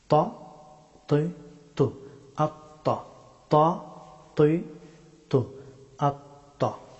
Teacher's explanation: ত হরফটি উচ্চারিত হয় জিহ্বার অগ্রভাগ এবং সানায়া উলিয়া এই দুই দাঁতের মাড়ি · জিহ্বার অগ্রভাগ এবং সানায়া উলিয়া এই দুই দাঁতের মাড়ি তৈ তৈ ত হরফটি মুখ ভর্তি করে উচ্চারণ করতে হয়